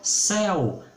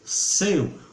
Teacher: Ditongo aberto e ditongo fechado.